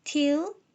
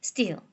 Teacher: t가 initial 사운드로 쓰였나, 혹은 s 뒤에서 쓰였나에 따라서 t의 기식화와 비기식화가 정해진다라는 거고요.